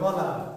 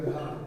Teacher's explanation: ক আর গ বলতে গেলে অনায়াসে তার বলা যায় অল্প পরিশ্রমে, আর খ এবং ঘ বলতে গেলে যেন একটু বাড়তি প্রেশার সৃষ্টি করতে হয়, কারণ একটু বেশি বাতাস বের করতে চাই আমি, ফলে একটু বাড়তি চাপটা বেশি দিতে হয়। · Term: মহাপ্রাণ